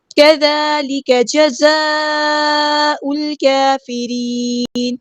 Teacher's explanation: کاف باریک light letter ہے، ذال کو نرمی سے ادا کرنے باریک لائٹ لیٹر ہے